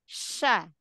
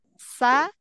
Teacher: diingat aja kayak huruf Sin dengan syin Dia hampir mirip kenapa kalau syin dia lebih ke tengah lidah kalau Sin dari ujung lidah